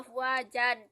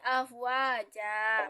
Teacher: Nah, kita mengganti fatatain ketika bertemu dengan wakaf. Sebenarnya itu kita membaca afwajan tapi diganti menjadi afwaja. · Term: mat iwad